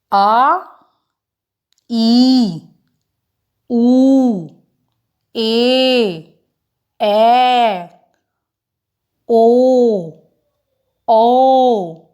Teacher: ਇਹ ਸਾਰੀਆਂ ਦੀਰਘ ਸਵਰ ਧੁਨੀਆਂ ਹਨ, ਕਿਉਂਕਿ ਇਹਨਾਂ ਧੁਨੀਆਂ ਨੂੰ ਉਚਾਰਨ ਵੇਲੇ ਲਘੂ ਸਵਰ ਧੁਨੀਆਂ ਨਾਲੋਂ ਜ਼ਿਆਦਾ ਸਮਾਂ ਲੱਗਦਾ ਹੈ